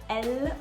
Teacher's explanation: when you're making the l sound in french you're actually taking the tip of your tongue and having it touch up here it's called the alveolar ridge it's above the back of your teeth and it's kind of